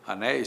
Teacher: Anéis, ditongo é, ditongo aberto, ditongo tônico, a palavra é oxítona